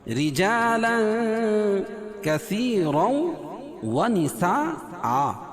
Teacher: منهما اظہار حلقی ہے، رجا را کو باریک پڑھیں گے، اور تنوین کے بعد حروف اخفا کے 15 حرفوں میں سے کاف ہے تو یہاں ناک میں آواز کو چھپا کر پڑھیں گے